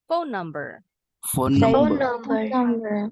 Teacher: Phone number. Phone ends with an N consonant sound, and then we'll link the next sound with the same consonant N. Phone number, N-nya cukup sekali bacanya.